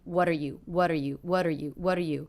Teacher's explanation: very fast quite flat lower in volume